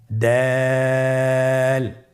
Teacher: ছবিতে দেখা যাচ্ছে জিহ্বার আগা সামনের উপরের দুই দাঁতের গোড়ার সঙ্গে লাগিয়ে উচ্চারিত হয়।